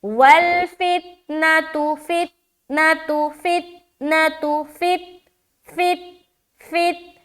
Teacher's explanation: क्यों, क्योंकि ता हरूफे कलकला में से नहीं है, लिहाजा हमें अपनी आवाज को ता की मखरज में अटका लेना है, वहां से लौटता हुआ मालूम नहीं होना चाहिए। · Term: बगैर कलकला